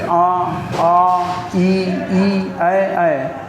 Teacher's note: इन्हें बोलने पर होंठ की आकृति गोल नहीं होती, जैसे आ ई ऐ, तो ये आवृत्तमुखी स्वर में आते हैं। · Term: अवृत्तमुखी